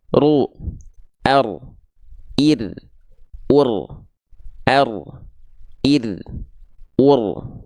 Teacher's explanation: huruf r dilafalkan dari daerah punggung lidah lalu dilafalkan jangan sampai getarannya terlampau berlebih berlebihan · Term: huruf ro